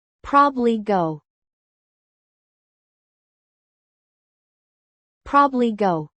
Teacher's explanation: The middle sound is often dropped.